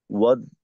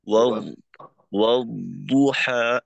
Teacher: এখানে দদের ক্ষেত্রে আওয়াজটাকে একেবারে আটকাই দেওয়া যাবে না। ওয়াদ এভাবে না হয় ওয়াদ, ওয়াদুহা, মাখরাজে আওয়াজের গুঞ্জনটা চালু থাকতে থাকতে তারপর এই দদের পেশের উচ্চারণটা হবে।